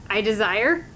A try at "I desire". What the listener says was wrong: You're saying it with a question mark on the end.